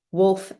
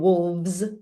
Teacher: It's super weird that we make the final fricative voiced. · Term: fricative final voicing